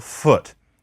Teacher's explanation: We also have a lax, slightly inward alternative to U. And that is the sound in, for example, foot.